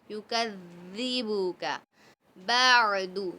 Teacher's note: یکذبک میں ک کو نہیں کھینچیں گے اور زال کو نرمی سے پڑھیں گے، سختی نہیں کریں گے زا کی طرح. ٹھیک ہے، یکذبک بعد، دال کو نہیں کھینچیں گے اور عین کو حلق کے درمیان حصے سے نکالیے.